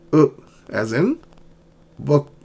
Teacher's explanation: It's a short uh but your lips are still round. Okay. But they're loose.